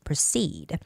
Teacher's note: the stress goes on EE, proceed.